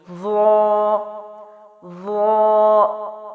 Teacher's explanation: ضا جو ہے وہ موٹا ہونے کے ساتھ ساتھ، موٹی آواز کے ساتھ ساتھ یہ نرم حرف بھی ہے، ٹھیک ہے؟ جس طرح سا ہے، زال ہے، اسی طرح ضا ہے، لیکن ضا موٹا ہے اور نرم ہے۔